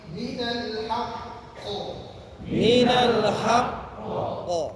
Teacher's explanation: huruf akhir yang ditasydid dan dia ditahan 1 detik. Jangan 1 menit. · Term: qalqalah kubra